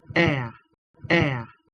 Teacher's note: しかも日本人に言いやすいのは▁air▁みたいに完全な二重母音にしちゃうことです